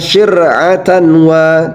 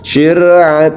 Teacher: cara membacanya dimasukkan suaranya suara nunnya atau tanwin ke huruf idgham